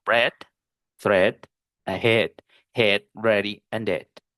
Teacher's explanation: si está seguida por la D de dedo, no va a sonar I larga, sino epsilon